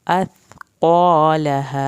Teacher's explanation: ता को ज़बान की नोक से अदा करके क़ाफ़ को पुर करना है।